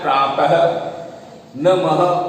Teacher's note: लेकिन जो विसर्ग होता है तो विसर्ग में हा की आवाज आती है। अब जैसे तुम्हें लिखना है प्रातः, नमः, तो हा आ रहा है लास्ट में।